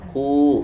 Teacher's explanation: Yaku, ku, waw domah, waw sukun, waw sukun didahului oleh qaf berharokat domah. Ku mad tabi'i dibaca panjang 2 harokat atau 1 alif